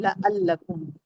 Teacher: लाम को जल्द पढ़ेंगे ना लाम पे तजदीद है ना दो बार पढ़ेंगे